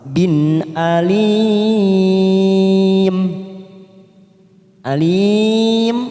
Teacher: tanwin yang bertemu Hamzah namanya Idhar halq kita baca jelas tanpa mendengung